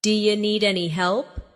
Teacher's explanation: do you sounds like d'ya.